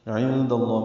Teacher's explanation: عین وسط حلق سے ادا ہوگا